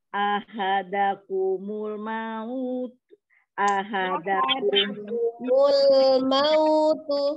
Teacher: jelas lam sukunnya didudukan dulu ya. Tidak sekali lewat.